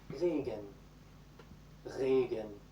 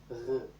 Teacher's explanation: You're really trying to get the base of your tongue and the back of your mouth to touch the back part of the roof of your mouth, then make it vibrate a little bit, and then add some voice behind it.